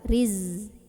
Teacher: Sofir itu adalah desisan ya. Jadi ini berdesis kayak suara lebah. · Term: sifat sofir